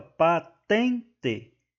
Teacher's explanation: é uma paroxítona, pois a sílaba tônica é a penúltima e não a última. Então, não é oxítona, é uma paroxítona.